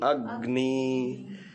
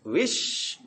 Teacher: गुरु करने के लिए अ की एक मात्रा बोलनी है और बची हुई अ की मात्रा स्टॉप करके अगले वाले में बोलते हैं ना ग न में से ग को अ के साथ चिपका करके थोड़ा स्पेस देना है, झटका देना है, रुकना है